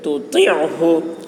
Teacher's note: طا کی آواز موٹی ہوگی طا کو عین سے ملا کر عین کو حلق سے ادا